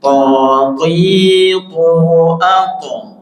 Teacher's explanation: Seolah to tapi bukan to tapi to sukun ato, pantulan.